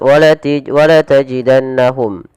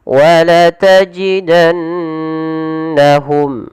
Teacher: harus dibaca dengan bacaan yang kita namakan dengan gunnah, yaitu sembari menahan memasukkannya ke rongga hidung